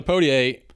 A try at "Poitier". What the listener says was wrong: No, I pronounce the first I. It's Poitier.